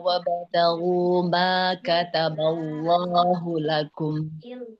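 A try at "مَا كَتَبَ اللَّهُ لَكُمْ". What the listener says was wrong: Oke, coba diulang sedikit di kata Allah Ibu. Lamnya sudah bagus tebal, tapi huruf ba-nya agak sedikit ikut tebal. Kataba, kataballahu lakum.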